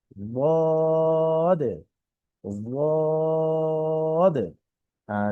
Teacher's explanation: একদম দালও শোনা যাবে না, একদম জদও শোনা যাবে না, এর মধ্যবর্তী একটি সাউন্ড এখানে হয়।